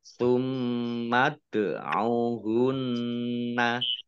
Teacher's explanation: Dal sukun bacaan kolkolah atau memantul ditampakkan pantulannya